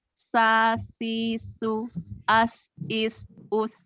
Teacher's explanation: keluar dari ujung lidah di antara gigi atas dan gigi bawah. Jadi lebih dekat ke bawah. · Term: sin